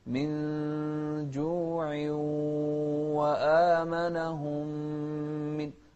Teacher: لاحظت المقادير متساوية في الإخفاء وكذلك في التقاء الميمين المشددة